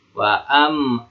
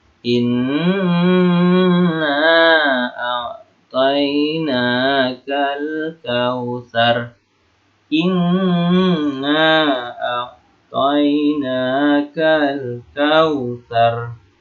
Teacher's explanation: dibaca dengan dengung selama 2 harakat